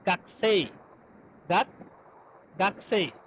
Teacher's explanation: এই যে কু এর উটা আপনার ডিভয়েসিং হয়ে গেছে, মানে ভয়েসটা নাই হয়ে গেছে। তাহলে এই যে গাকসেই, তাহলে গাকু হয়ে গেছে কি, গাক, তাহলে গাকসেই।